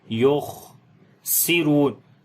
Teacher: خا کو موٹا پڑھیں گے اور اس کے اوپر صفت ہمس ہوگی، سانس یہاں پر بھی جاری کریں گے